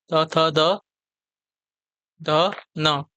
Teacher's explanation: दंत में आपके त वर्ग आते हैं।